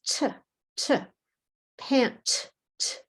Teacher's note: that pant, the T sound, there's no vibrate.